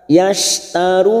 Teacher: Yashtarun hukumnya mat arid li sukun, karena ada mat yang bertemu dengan huruf hidup dan dibaca wakaf. 4 harokat kita panjangkan.